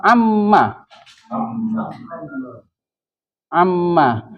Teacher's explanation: kalau berbentuk pertanyaan maka madnya hilang menjadi Amma